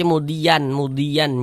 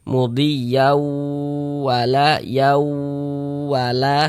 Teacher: Bunyi tanwinnya dimasukkan ke huruf waw. Ini kita baca mudiyau, jangan dibaca mudian, jangan, tapi dibaca mudiyau seperti itu. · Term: idgham bi gunnah